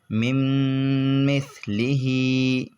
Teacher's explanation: میم نون میم زیر مم، میم ثا زیر مث، مم مث، لام زیر لی، مم مثلی، ہا کھڑا زیر ہی، مم مثلی۔ تو یہاں پر نون ساکن کے بعد میم آیا، یہاں پر بھی ادغام ہوگا اور ادغام کے ساتھ ساتھ گنہ بھی ہوگا